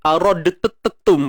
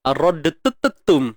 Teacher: Dal tu nak qalqalah, huruf ta nak sabdu lagi.